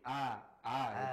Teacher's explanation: Alif itu tidak tebal dan juga tidak tipis